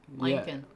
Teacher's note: It already turns into a velar nasal before a K, and so when you try to, it just sounds like you have a southern twang on the word Lincoln.